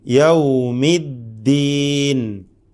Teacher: ദാൽ ഷിദ്ദത്ത് എന്ന ഒരു കടുപ്പം നൽകപ്പെടുന്ന സ്വരവിശേഷണമുള്ള ഒരു സിഫത്തുള്ള ഹർഫാണ്